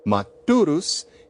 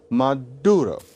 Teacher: The S at the end of the word disappeared.